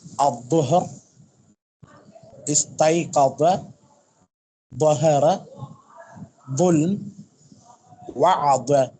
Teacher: நுனி நாக்கு மேல் பற்களின் ஓரத்தில் இணையணும் உஸ்தாத். கொஞ்சம் நாக்கு வெளியே தள்ளி இருக்கு.